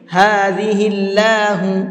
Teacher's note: ہذہ اللہ، اللہ کے لام کو منہ بھر کے نہیں پڑھیں گے، یہاں پہ اللہ نہیں پڑھیں گے، بلکہ ہذہ اللہ، ٹھیک ہے، اس لیے کہ اللہ کے لام سے پہلے زیر ہے، اور اللہ کے لام سے پہلے زیر ہوتا ہے تو اللہ کے لام کو منہ بھر کے نہیں پڑھتے ہیں، بلکہ نارملی پڑھتے ہیں